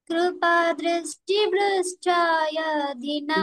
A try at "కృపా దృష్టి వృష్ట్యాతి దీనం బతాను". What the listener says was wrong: వృష్టాతి. హరే కృష్ణ. యా లేదు. కృపా దృష్టి వృష్ట్యాతి దినం బతాను. పాడు.